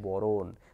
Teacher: বর্ণকে বিশ্লেষণ কি পাবো, ব যোগ র যোগ ন যোগ অ, আর বরণে ব যোগ অ র যোগ অ মধ্যাহ্ন, অর্থাৎ কি হচ্ছে, দুটা ব্যঞ্জনের মাঝে একটা কিন্তু স্বরধ্বনি চলে এসছে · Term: স্বরভক্তি